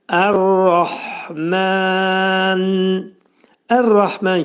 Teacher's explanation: Ərrahman kəlməsində demək ra hərfi qalın oxunacaq. qalın hənin üstündə demək ani tormuzlanma hə boğaza salınacaq.